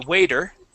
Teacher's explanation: we pronounce that t like a d